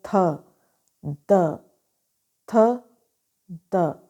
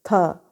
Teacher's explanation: tip of द tongue जो है वो अप्रोच कर रही है inner part of द upper front teeth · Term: डेंटल साउंड